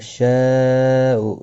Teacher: یہاں پر مد متصل ہے، 4 الف کی مقدار کے برابر کھینچ کر پڑھیں گے